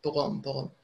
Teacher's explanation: And the R is always linked, because the H is silent, it's always linked to the next word. So the French do this consonant vowel linking a lot, pour homme, pour homme.